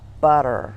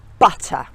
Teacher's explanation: they would tend to glide over the T and make it more into a D so butter would become borrower so if you want to sound